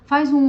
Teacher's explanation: faz um U aí e sente a posição da sua língua. Está na parte posterior. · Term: som posterior